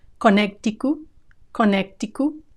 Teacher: Some are going to insert a G sound in the middle.